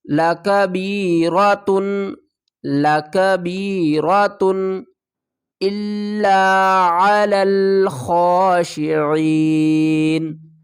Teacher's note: اظہار کریں گے کیونکہ آگے حروف حلقی میں سے حمزہ آ رہا ہے